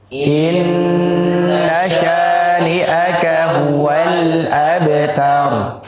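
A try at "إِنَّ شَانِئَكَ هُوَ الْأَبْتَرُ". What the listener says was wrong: Yang pertama jangan lupa syah tipis. Syani'aka. Yang kedua hamzahnya dijelaskan. Syani'aka. Inna syani'aka huwal qalqalah sughra.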